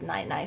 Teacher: whether you're speaking formally or informally, it's always 奶奶, third tone, second tone